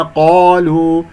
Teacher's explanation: القاف مفخمة مرتبة أولى مفتوح بعدها ألف